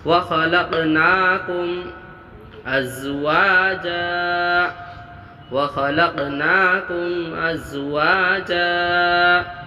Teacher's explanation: لق قلقلہ ہوا، پڑھتے وقت آواز لوٹانا ہے، کھڑا زبر کو 1 الف مقدار کھینچ کے پڑھنا ہے۔